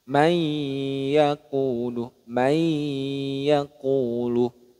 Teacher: dengan yanmu ya ya Nun mim wau maka cara membacanya yaitu meleburkan bunyi Nun sukunnya ke huruf setelahnya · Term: idgham bhunah